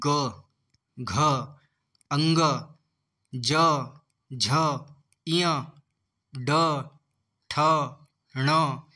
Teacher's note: तो दोस्तों इन्हें बोलने पे हमारी स्वर यंत्रियों में कंपन हो रहा है। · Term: सघोष व्यंजन